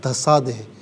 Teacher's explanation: اچھا یہ دھنسادے نہیں ہوتا دھسادے. نون کا ہلکا سا ساؤنڈ آئے گا دھسادے، جس طرح آتا ہے نا وہ نون غنہ کا، اس طریقے سے ہلکا سا ہوگا